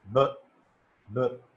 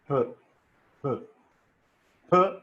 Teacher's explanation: You say b, b. When you say b, there is a vibration. P, there is no vibration. So wherever there is no vibration, that is called voiceless.